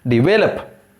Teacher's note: Second syllable should be given the stress. Second syllable is the stressed syllable.